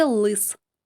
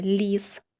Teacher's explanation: у слові лис звук л звучить твердо А у слові ліс звук ль звучить м'яко